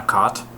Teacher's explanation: I pronounce them basically the same way